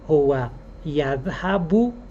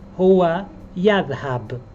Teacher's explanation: the last short vowel of a word in Arabic is optional to pronounce